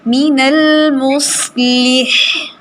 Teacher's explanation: صاد کے اوپر بھی سیٹی اور ہا کا ہمس